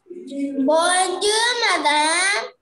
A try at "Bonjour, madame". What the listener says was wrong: When you say bonjour, the last letter R will be silent. Okay, don't say, you don't have to say R there. Bonjour is enough. Say bonjour.